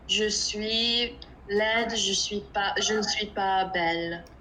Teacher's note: just make sure don't say the S at the end of suis